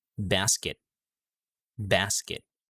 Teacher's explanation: for unreleased sound we're not finishing the sound to the letter t